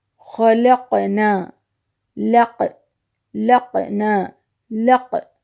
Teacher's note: قاف کی آواز لوٹ کر کے آ رہی ہے، واپس آ رہی ہے، یعنی دوہری آواز نکل رہی ہے۔ اسی طرح سے ان 5 حرفوں میں سے کسی بھی حرف پہ جب سکون ہوگا تو اس کے پڑھنے کا طریقہ یہ ہوگا، اور یہ جو آواز نکلے گی اس کو ہم قلقلہ کہتے ہیں۔